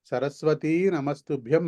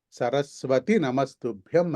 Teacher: అక్కడ దీర్ఘం లేదు, సరస్వతీ దీర్ఘం లేదు అక్కడ.